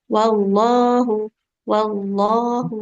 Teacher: Allahu haknya nggak boleh panjang ya. Di lafadz Allah itu yang panjang pasti lamnya. Haknya nggak akan panjang.